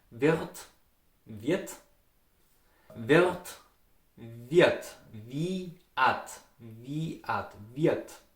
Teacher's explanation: the R sound, R, it's vocalized to an A sound anytime if the R stands in front of a consonant and after a vowel